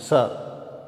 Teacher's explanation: तो ये सिंपली सीधा सीधा स का उच्चारण हो जाता है और ये वत्स्य वर्ण है